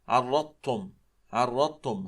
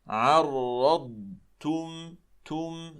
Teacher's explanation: ولا ندغمها كذلك في التاء، فبعض الناس يقرأ هكذا: عرضتم، عرضتم، هكذا لا يصح، إنما عرضتم، تم، هكذا. فصوت الضاد مستقل عن صوت التاء